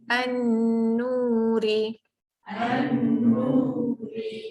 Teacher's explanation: Jadi an dengung dengan nu tu sama panjang. Nu tu nu dua kan sebab ada waw. · Masukkan bunyi lam kepada nun. Nun tu ada tanda sabdu, anda kena dengungkan. Okey, pertama alif lam syamsiah, kemudian tambah hukum wajibuhunnah.